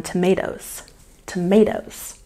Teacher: we've got a stress on the second syllable in tomatoes